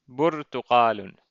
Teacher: There isn't a long vowel, it's rather a short vowel, bu.